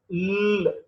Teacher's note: Lateral l sound. The air flows through both sides of the tongue.